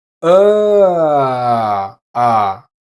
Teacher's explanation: To produce this sound, you can start with the normal E schwa, uh, and slowly move your tongue down towards the German A. If you stop somewhere in the middle, you should have it.